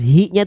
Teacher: nah nafasnya keluar suaranya mengalir tidak sama-sama ya oke nah karena dia punya sifat hams dan rakah mengalir nafas dan mengalir suaranya